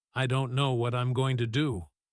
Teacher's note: Notice how slowly and heavily this comes out, each word landing with weight. The pace dragging compared to his earlier energetic storytelling about starting the bakery.